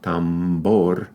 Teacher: One in the word tambor is a bilabial, tambor, and that's because it comes after a nasal consonant.